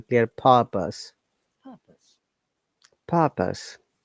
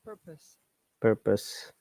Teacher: british english we do not pronounce r so it should be clear purpose purpose american english purpose purpose